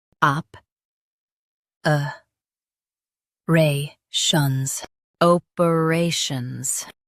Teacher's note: Stress ray and keep op shuns smooth.